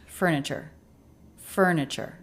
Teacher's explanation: Furniture. The t here is the ch sound.